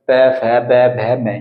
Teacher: फै फै में भी हमारे जो दोनों होंठ है एक दूसरे का आपस में संपर्क होगा, तब जाकर पै फै बै भै मै, ये यहाँ पर ये पांचों वर्ण का उच्चारण हम तभी कर सकते हैं अपने होंठों की सहायता से। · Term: ओष्ठ्य व्यंजन